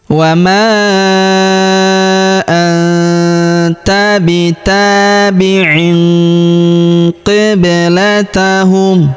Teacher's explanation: Huruf ba berharakat sukun kita pantulkan atau kita qalqalahkan.